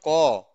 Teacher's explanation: যখন তুমি বলছো ক তখন কিন্তু সেই ক টা ক এর সাথে একটা অ আছে